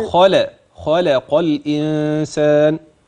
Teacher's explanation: الخاء تفخم اللم ترقق